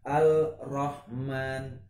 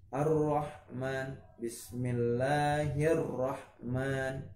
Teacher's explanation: Jadi tidak boleh dibaca dengan Al-Rahman walaupun ini alif lam gitu. Tapi alif lamnya jadi tidak terbaca ya, karena apa? Langsung dimasukkan ke huruf selanjutnya, itu huruf ro-nya tadi. Ar-Rahman harus ada tasydid ya, karena idgham dimasukkan. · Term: idgham syamsiyah